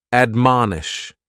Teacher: admonish has three syllables and the stress is on that second syllable · admonish has 3 syllables, and the stress is on that second syllable, mon. Admonish, and this is a verb that we use with a direct object, to admonish someone, usually for doing something wrong, because what it means is to counsel or advise against something.